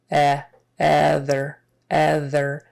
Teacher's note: It begins with an O sound, but really we pronounce it like a short E.